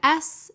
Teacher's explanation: you don't feel any vibration in your throat. That's because your vocal folds aren't being used. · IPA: /s/